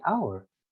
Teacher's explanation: We don't say the H, we don't pronounce the H sound there.